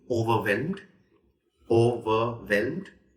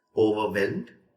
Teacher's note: The third syllable is where the stress is.